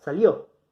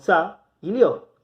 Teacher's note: Una vocal cerrada y una vocal abierta. Se mantienen juntas. Entonces, salió, siendo que es una palabra aguda y que termina en vocal, vamos a colocarle la tilde siempre sobre la vocal abierta. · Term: diptongo